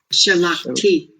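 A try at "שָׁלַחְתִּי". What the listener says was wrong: Yeah, but the accent is here. Shalachti. Shalachti.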